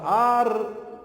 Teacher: eu sei que a tonicidade está na antepenúltima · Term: proparoxítona